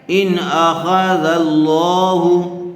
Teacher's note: نون ساکن کے بعد حروف حلقی میں سے حمزہ آیا ہوا ہے اس لیے بغیر گننے کے جلد اظہار کر کے پڑھیں گے